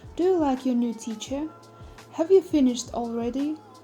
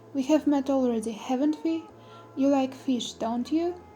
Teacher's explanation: The pitch of the voice rises at the end of the sentences. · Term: rising intonation